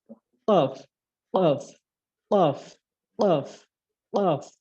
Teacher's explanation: চার নম্বর মাখরাজটি হচ্ছে জিহ্বার গোড়া তার বরাবর উপরের তালুর সাথে লাগিয়ে